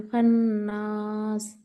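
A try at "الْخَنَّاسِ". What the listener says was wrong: खन, खन, और वक्त दीजिए, खन्नास, खन्नास, और लंबा करिए।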